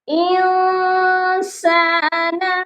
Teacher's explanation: اس والی نون ساکن پر ہم اخفا کریں گے کیونکہ نون ساکن کے بعد سین ہے جو حروف اخفا ہے، یہاں پر اخفا ہوگا۔